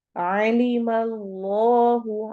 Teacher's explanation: आइन हरूफ हलकी में से है, हलक के दरमियान से अदा होगा